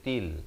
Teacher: Ta bari kasrah kita bunyi ti bukan bunyi te ya. Jadi jangan baca tel, baca til gitu.